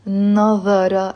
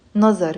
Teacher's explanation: It's not nazara as in standard Arabic. No, it's nazar. And there is a sukun on the re.